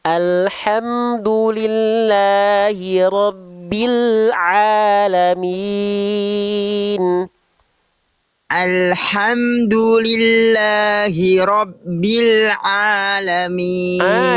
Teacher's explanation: Kuatkan sedikit lagi ainnya. Dari tengah tenggorokan